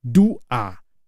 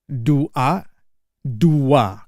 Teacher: But we don't pronounce it as do-a. We pronounce it as dua. So there's an imaginary W there.